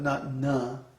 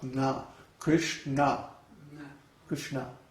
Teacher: It's not na, like a regular English na. It's but with the tongue up on the roof of the mouth